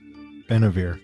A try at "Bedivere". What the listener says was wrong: No, it's B-E-D. No, not B-E-N, B-E-D.